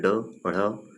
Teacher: जिनके उच्चारण में जीभ की नोक झटके से तालु को छूकर वापस आती है, उन्हें संक्षिप्त व्यंजन कहते हैं। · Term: उत्क्षिप्त